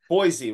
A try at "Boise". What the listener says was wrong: It is actually pronounced with an S, not a Z. So, I mean, most people say Boise, but it's actually an S. So it's Boise.